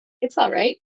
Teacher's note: you almost don't hear the L but I do pronounce it